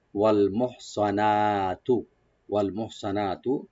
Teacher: সোয়াত আমরা একটু মোটা করে বা ডিপ করে পড়বো। ওয়াল মোহ সিন যেন না হয়। · মোহ হাটাকে একটু হামস করবো আমরা, গলার মাঝখান থেকে আনবো। সোয়াত আমরা একটু মোটা করে বা ডিপ করে পড়বো। · নুন একালিপ ওপেন করে টানবো